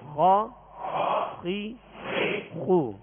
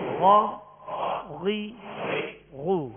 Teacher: اور خا کو غا نہیں پڑھیں گے، خا کو، کیونکہ یہ ایک ہی مخرج سے ادا ہوتے ہیں تو فرق یا مشق نہ ہونے کی وجہ سے، فرق نہ کرنے کی وجہ سے خا غین بن جاتے.